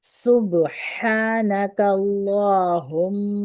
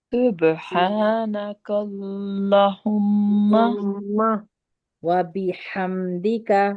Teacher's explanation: ہا کی آواز کو صحیح سے نکالنا ہے، سین میں سیٹی ہوگی، با پہ قلقلہ ہوگا